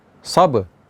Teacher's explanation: Ba sukun ada sifat qalqalah. Sabr. Dan ra ya, jangan kita tinggalkan.